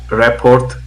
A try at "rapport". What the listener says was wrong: it's a silent T. It's pronounced rapport.